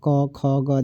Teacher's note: क जो होता है कंठ से उच्चारण होता है